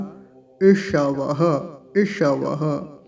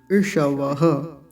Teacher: मूर्धन्य सकार जो है इसको तो विशेषकर अच्छे से ध्यान से बोलेंगे मूर्धा से बोला जाता है